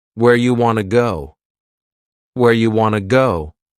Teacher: You becomes ya and want to becomes wanna.